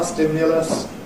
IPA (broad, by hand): ˈstɪmjələs